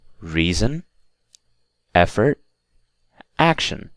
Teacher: so the stress is always on the first syllable